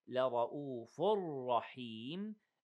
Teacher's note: We merge the tanween dham in the ra, but without any seconds. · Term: idgham without ghunna